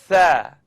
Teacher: it's the tip of my tongue coming up out at the edge of my top teeth. Now I'd just like you to simply blow the air between your tongue and your teeth.